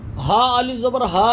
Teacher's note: ہا الف زبر ہا، ایک انگلی کی مقدار کھینچ کے پڑھیں گے